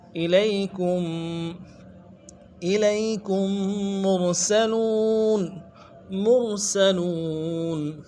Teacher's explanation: فقالوا انا الیکم، الیکم، کم میں میم کو جو تشدید ہے، میم ساکن ہے، اگلے میم کے ساتھ ملائیں گے تشدید والے سے